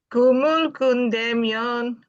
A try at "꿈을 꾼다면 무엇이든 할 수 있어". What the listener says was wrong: Oh, itu yang nadanya tinggi. 꿈을 꾼다면 무엇이든 할 수 있어.